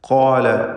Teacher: ഖാഫും അതിൻ്റെ ദീർഘാക്ഷരമായ അലിഫും തഫ്ഖീം നൽകി ഉച്ചരിക്കുക